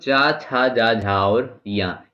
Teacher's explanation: ये तालव्य यानी तालु से बोले जाते हैं।